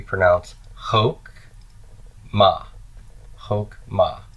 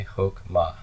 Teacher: no sound between the K and the M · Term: silent